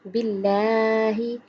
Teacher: یہاں اللہ دیکھیں باریک پڑا کیونکہ لفظ اللہ سے پہلے حرف کے نیچے زیر ہے، اس لیے اللہ کا لام باریک پڑھیں گے۔